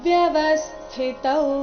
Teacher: ಸ್ಥಿ ನಲ್ಲಿ ಥಿ ಮಹಾಪ್ರಾಣ ಹ್ರಸ್ವ ಬರಬೇಕು